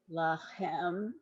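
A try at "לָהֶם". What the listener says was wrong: This is lahem. That's an H, right? that's the difference between the second to last and the last, the H versus the CH, right?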